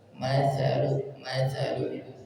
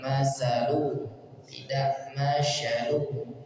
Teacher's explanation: ujung lidah bertemu dengan ujung gigi seri atas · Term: huruf sa